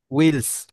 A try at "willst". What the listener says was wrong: উইলস বলতে ভাই বুঝি নাই, ভিলস বুঝাচ্ছেন আপনি? willst du zum Yoga gehen oder wollen wir joggen, মানে আমরা কি, তুমি কি প্রথমে প্রথমে বললো আর কি, তুমি কি ইয়োগাতে যেতে চাও নাকি আমরা একসাথে জগিং এ যাব।